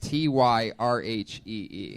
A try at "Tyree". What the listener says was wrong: There's a silent H in there. A silent H in it. The H, you don't even pronounce the H.